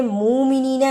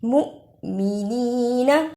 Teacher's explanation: جس حمزہ پر جزم ہو اس کو تھوڑا جھٹکا لگا کر پڑھتے ہیں